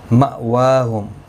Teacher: واو کے اوپر کھڑی زبر ہے، ایک الف کی مقدار کے برابر کھینچ کر پڑھیں گے